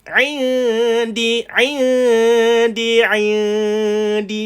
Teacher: ain duduk di tengah kerongkong, bukan di hidung.